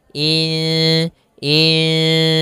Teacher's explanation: nunnya kita samarkan kepada huruf Sin kemudian terdengar suara samar-samarnya in Insan panjangkan dulu dengungannya atau panjangkan dulu ikhfanya panjangkan dulu